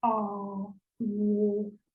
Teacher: а, о деген кезде тіл сәл артқа шегінеді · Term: Жуан дауыстыларды